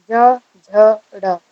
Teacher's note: जब आपने ज, झ, ड़ को बोला तो आपकी जो आवाज है आप खुद फील करोगे कि आपके गले के आसपास कुछ कंपन हो रही है